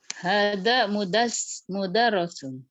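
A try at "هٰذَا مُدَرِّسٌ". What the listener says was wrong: Hadza mudarri. Oh, itu bacanya ri, Ri atau ro?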